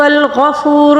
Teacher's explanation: نقطے والے غین کو ہم نے حلق کے سب سے اوپر والے حصے سے ادا کرنا ہوگا. اچھا غفور، اب یہاں پر واو مدہ ہے، اس کو ایک الف کے برابر کھینچ کر پڑھیں گے.